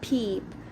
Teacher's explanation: there is a puff of air coming out of your mouth · When you say peep, there is a slight aspiration after the first p.